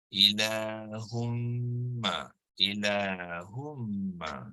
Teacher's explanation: Itulah kenapa dalam konteks idgham ini mim tu ditandakan tasydid, ya, bermakna nun yang ada di dalam tanwin tu tidak lagi disebut, ya, tidak lagi disebut dalam bacaan. Hanya tinggal satu baris saja, iaitu baris dhammah. · Jadi ilahu, dan terus baca kepada mim, ialah ilahumma, ilahumma, ya. Jadi bermakna dengung sepanjang 2 hingga 3 harakat itu datangnya daripada mim yang bertasydid, di mana di dalam mim juga terdapat nun yang sukun, ya. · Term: idgham ma'al ghunnah kamil